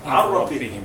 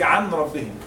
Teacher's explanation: there is no ghunna while making the idgham. Okay? The way of the pronunciation, skip the noon as you know, or tanween, and pronounce lam or ra without ghunna.